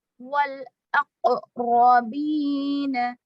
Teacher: والاقربین, میں قلقلہ ہو رہا ہے, قلقلہ مکمل طور سے کریں گے